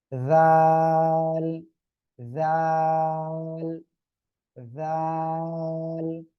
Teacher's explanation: জিহ্বার আগাটা ওই দুই দাঁতের আগায় লাগান, ওই দুই দাঁতের আগায় লাগান, সামনের উপরে দুই দাঁতের আগায় লাগান লাগান, লাগিয়ে উচ্চারণ করতে হবে